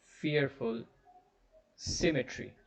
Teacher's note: symmetry is three syllables the first syllable is stressed